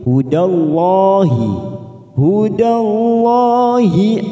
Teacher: lalu ada lam jalala yang didahului fathah maka kita baca tafkhim